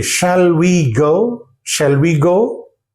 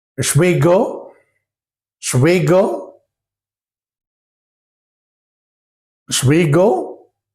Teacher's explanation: Look at the word shall. In this word, the last syllable is dropped out. Al, shall, al is dropped out.